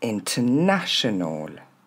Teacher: On entend pas le R.